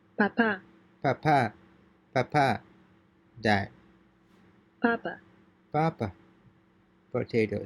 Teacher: The Spanish P is pronounced like the P in the word spot, except that there is no puff of air.